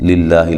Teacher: لفظ اللہ کو باریک پڑھیں گے، اس سے پہلے زیر ہے